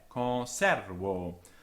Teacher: con is long and it's not stressed. The stress is on the e, conservo.